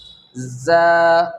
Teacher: रॉ के बाद में आता है ज़ा, तो ज़ा सख्ती के साथ में अदा करेंगे और इसका मखरज है ज़ुबान की नोक सनाया सुफला यानी नीचे के दो दांत के जड़ में लगने से ज़ा अदा होता है। इसको थोड़ा सख्ती के साथ में पढ़ेंगे, लाल नरमी के साथ पढ़ते हैं और ज़ा सख्ती के साथ में ज़ा।